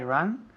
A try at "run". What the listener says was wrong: Run, no ran. Run. Es un poco cerrado. Tienes la boca cerrada. Run. Run.